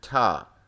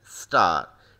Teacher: If you put the back of your hand in front of your mouth as you say ta then star, you shall be able to feel some physical evidence of aspiration, the puff of air accompanying the t sound at the beginning of ta but not in star. This aspirated version is represented more precisely as th, that's one phoneme.